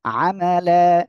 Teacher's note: এক জবর বাদ দিয়ে আমরা এক আলিফ টেনে পড়বো